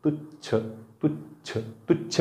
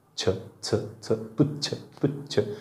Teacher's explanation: तुच्छ म्हणताना जिभेचा शेंडा समोर येतो